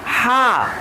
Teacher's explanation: हा का मखरज निकालेंगे तो हलक़ से फुल्ली तौर पे ये साउंड रिलीज करता है